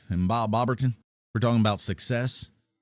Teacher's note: I can get that really intimate, close, warm, deep, low sound. I can go into that vocal fry that I'm always talking about and make my point.